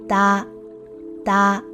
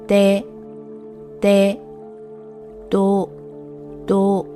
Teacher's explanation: D is a voiced sound, meaning that the sound is produced with vocal cord vibration, but with little to no air expulsion. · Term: voiced D sound